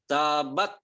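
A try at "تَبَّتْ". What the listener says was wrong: Bukan tabat. Anginnya nggak keluar. Tapi tabbat. Mana anginnya belum keluar? Anginnya keluarin Pak. Jangan ditahan, jangan tabbat. Tapi langsung. Tapi jangan ada S-nya.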